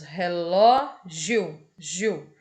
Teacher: aqui nós temos o I, semivogal, e o O, que é uma vogal. Então, a gente chama de tom crescente porque a gente começa com uma semivogal e depois vem uma vogal. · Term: ditongo crescente